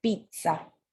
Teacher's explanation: Y creo que ya les había comentado que hay un sonido como una T antes de empezar la Z